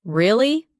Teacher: For example, when you ask a question like really, your voice goes up slightly at the end. When you show understanding with I see, your tone drops slightly to show calmness. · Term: rising tone